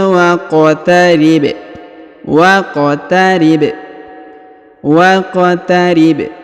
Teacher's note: huruf ba berharakat sukun ya maka kita pantulkan